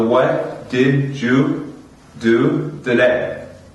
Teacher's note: we use the American T between two vowels